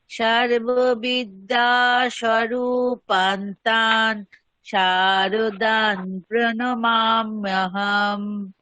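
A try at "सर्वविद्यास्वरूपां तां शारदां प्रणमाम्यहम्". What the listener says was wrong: সর্ববিদ্যা স্বরূপাম তাম শারদাম, সব জায়গাতে মকার আছে। স্বরূপ শারদাম।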